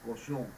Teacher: Es como si vibráramos la O con la N arriba de la nariz y la juntáramos más. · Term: vocales nasales